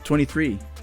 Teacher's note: the main stress falls on the last syllable